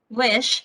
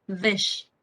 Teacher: of the h is letter z so so as a result many english speaking germans produce wish as vish